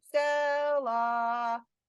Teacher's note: Yeah, calling it to dinner is not effective for syllable stress. Because when you call something to dinner, you naturally elongate all of the syllables